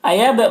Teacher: با میں قلقلہ ہوگا